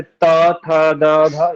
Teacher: त थ द ध ये सब दांत वाले व्यंजन वर्ण है